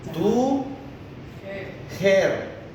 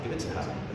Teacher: It's schwa and schwa ta, because these are not content words. These are function words.